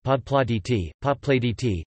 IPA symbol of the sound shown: d ↔ t